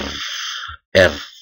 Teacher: disebut likuida sehingga dikatakan demikian kemudian konsonan getar atau Tril adalah cara menjauhkan menjauhkan dan mendekatkan lidah ke avolong secara cepat dan berulang-ulang